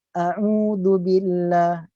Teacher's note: Nampak dia punya transition di antara Hamzah ke ain.